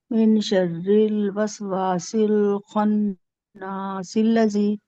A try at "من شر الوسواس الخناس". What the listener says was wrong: ہاں یہاں پہ گننا کیجیے، اور زیادہ گننا کیجیے.